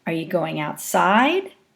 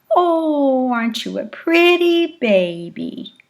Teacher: You could hear variations in the intonational contour as 250 hertz moves up and down.